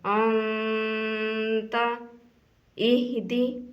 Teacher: تو نون کے اوپر گنہ کرنا ہے، یعنی کہ ناک سے آواز نکالنی ہے